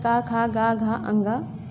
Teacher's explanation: का वर्ग के सभी वर्ण का उच्चारण स्थान कंठ है